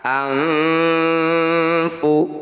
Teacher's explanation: Jadi ketika dengung, lidah kita ini bergeser dari posisi nun sukun menuju huruf fa. Nah, pergeseran itulah yang disebut ausab. · Disebut samar karena bunyinya antara nun dan fa, jadi tidak jelas ya bunyinya. Kemudian ausab itu pertengahan, artinya ketika bunyi nun sukun ini kita dengungkan anfu. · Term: ikhfa awsat